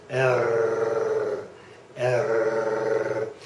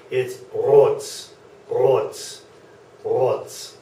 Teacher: my tongue is not vibrating there it is just the back of my throat